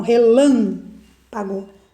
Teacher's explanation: a sílaba mais forte é a sílaba lã, tá? Então, relâmpago.